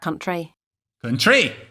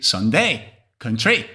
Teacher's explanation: there's a fall rise intonation